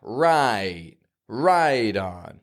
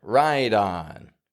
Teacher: connect the two with one of those little flap T's, right? Right on.